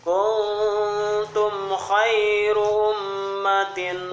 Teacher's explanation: Kota itu teh ihfa, nun mati menghadap kita, rada ditahan sedikit. Ya, rada ngadengung.